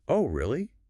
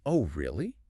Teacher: If you say it with a rising, bright pitch, Oh, really? it means genuine surprise.